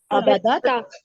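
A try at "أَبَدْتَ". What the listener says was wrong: अबत्ता, अबत्ता, याद रखिए इसमें दाल की आवाज नहीं निकलनी, अबत्ता।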